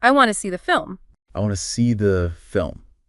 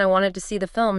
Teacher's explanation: The content words want, see, film get the stress. But to and the, they become weak.